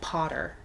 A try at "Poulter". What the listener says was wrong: Will Poulter. No, it's L. But it sounds... Poulter. Pool. It's probably more pool. Poulter. It's probably more of the ool, like ghoul. Will Poulter is Poulter.